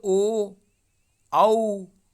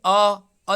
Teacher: अ जो है वृत्त की तरह आपका मुंह नहीं बनता है, गोल नहीं बनता है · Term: अवृत्ताकार